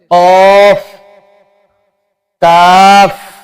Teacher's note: जबान की जड़ और तालू के नरम हिस्से से